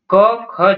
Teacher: क ख जो है यह कंठ व्यंजन है